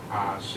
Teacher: That's not the correct pronunciation. It goes from low tone to mid tone.